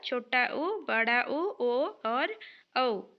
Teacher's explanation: पश्चस्वर। जिन स्वरों के उच्चारण में जीभ का पिछला भाग सामान्य स्थिति से उठता है, पश्चस्वर कहते हैं।